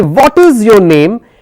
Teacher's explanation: My tone is high on what is and for the name it comes down. So a falling intonation is where it's going it's just going down.